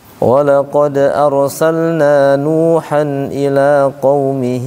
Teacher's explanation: Qaumihinya agak panjang itu. 4 harokat, 4 sampai 5. ولقد أرسلنا نوحا إلى قومه karena dia mad silah kubra.